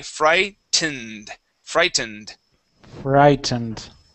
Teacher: we do pronounce that T. That's not going to be a D, but this E here in the middle is silent